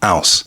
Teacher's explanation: the dropping of H at the beginning of words.